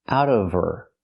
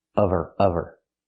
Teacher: Now we need the V sound in of because we don't pronounce the H in her. We link the sounds.